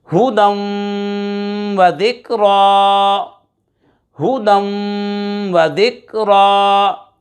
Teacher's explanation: دو زبر کی تنوین کے بعد واو حروف یرملون میں سے آ رہا ہے، ادغام یرملون مع الغنہ ہوگا۔ ہا پیش ہو، دال، واو دو زبر دم، ہدم، واو زبر و، ذال کاف زیر ذک، و ذک را کھڑا زبر را، و ذکرا، ہدم و ذکرا۔